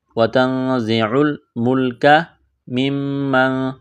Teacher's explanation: نون ساکن کے بعد زا ہے، حروف اخفا ہے غنہ کریں گے، آواز ناک میں چھپائیں گے · زا میں سیٹھی کی آواز پیدا کریں گے